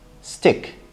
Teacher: The T in the word stick is not aspirated, but what we have in our mind is the normal T.